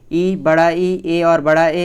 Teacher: जिन स्वरों के उच्चारण में जीभ का अग्र भाग प्रयोग होता है उसे अग्र स्वर कहते हैं।